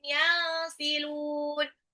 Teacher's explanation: nun sukun ketemu sin itu adalah ikfa